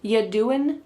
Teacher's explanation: The word you is reduced to y.